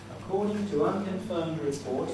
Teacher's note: there is one nucleus and it's the rise on reports